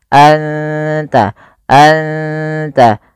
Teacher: anta, ikhfa hakiki, suara nunnya samarkan ke ta dan tidak boleh dijelaskan, tidak boleh anta, tapi anta, anta, langsung ke makhraj daripada huruf ta.